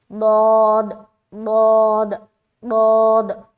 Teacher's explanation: جو داڑ ہے نا، داڑ زبان کا جو بغلی کنارہ اس کو داڑ سے ٹچ کرتے ہوئے ضاد ادا کریں گے